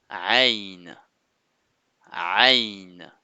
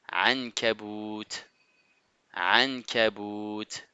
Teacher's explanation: Il vient du moins, elle vient du milieu de la gorge, comme si vous serriez un peu la gorge. C'est un son doux et profond à la fois. Ce n'est pas A ni E. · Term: la lettre Aïn